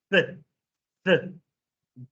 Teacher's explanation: And the third sound, th. All you do is the tongue touches the tooth, and you blow.